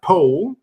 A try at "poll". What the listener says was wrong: Yeah, you used to say pool. Now you say pool.